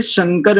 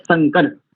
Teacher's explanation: और बोले शंकर में तालव्य शकार होता है तब इसका अर्थ होता है कल्याण देने वाला या कल्याणकारी, कल्याणकारक। और इस तालव्य शकार के स्थान पर यदि दंत सकार लगा दे तो हो जाता है संकर।